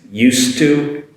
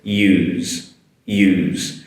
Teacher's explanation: be used to, the S is a S sound, used to, be used to. Whereas the use, the S is a Z sound.